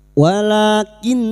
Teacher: nun yang bertasdid gunna musyaddadah. Kita dengungkan selama tiga harakat.